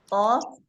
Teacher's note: pangkal lidah bertemu dengan langit-langit yang lunak.